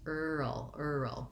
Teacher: i have to do my er sound uh my vocalic r and then my syllabic or vocalic dark l at the same time right in sequence